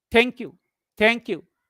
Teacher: This is genuine gratitude. When thank you is spoken in a falling tone, this is a genuine gratitude.